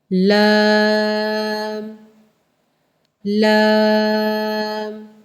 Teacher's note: لام کہتے ہوئے لا میم، اینڈ میں میم کی آواز آتی ہے۔ لام لام، لام پڑھتے ہوئے ناک میں آواز نہیں لے کے جانی، لام نہیں کر دینا اس کو۔